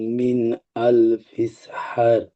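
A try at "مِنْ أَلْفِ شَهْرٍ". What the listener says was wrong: জি, এখানে আল ফিসা হার হয়ে যাচ্ছে। বুঝতে পারছেন? আল ফিসার, শাহ, শাহ, শাহ, শাহ বলে শেষে হালকা করে র করে দেবেন। ফিসা হারের মতো লাগবে শুনতে, কিন্তু ফিসা হার হবে না। আল ফিসার। আল ফিসার।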